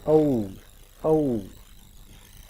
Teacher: और जब ऊ साउंड होगा औ तो बिल्कुल लिप्स की जो पोजीशन है वो राउंड हो जाएगी